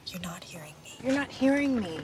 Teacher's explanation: you might want to stress the word hear if you mean it like this, to say completely understand what I'm saying